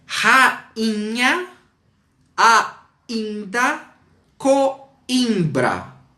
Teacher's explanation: Porque aqui, nesse caso, eles são nasais. Então, rainha sofre a nasalização da consoante seguinte.